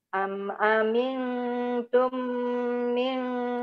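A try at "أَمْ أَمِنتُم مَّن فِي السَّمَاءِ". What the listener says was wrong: ma bukan mi. Ayo.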